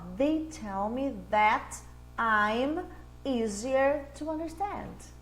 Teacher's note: Porque o T no meio de uma palavra, ele vira som de D.